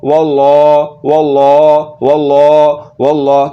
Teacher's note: واو کے اوپر زبر آ جانے کی وجہ سے ہم نے لفظ اللہ کے لام کو پر یعنی کہ موٹا کر کے پڑھنا ہے